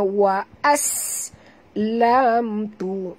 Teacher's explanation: Sin apabila dia mati bunyikan safirnya · Mim mati bertemu ta. Tak boleh dengung. Bacaannya terang tanpa dengung.